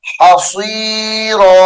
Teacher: صاد کو موٹا کر کے پڑھیں گے اور را کو بھی پر کیا جائے گا